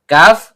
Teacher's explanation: pangkal lidah naik ke langit-langit di atasnya.